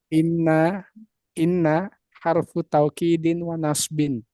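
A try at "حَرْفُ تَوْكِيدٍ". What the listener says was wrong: Jangan harfut, harfut jangan. Tapi harfu taukidin. Yang jelas ulangi.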